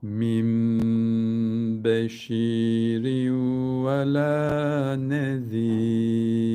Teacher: Sakinundan sonra B harfi gelirse burada olduğu gibi iklap olur. Şu nunu mime çevirdikten sonra devamındaki bu B'yi yine okuyoruz. Onda hiçbir oynama yok.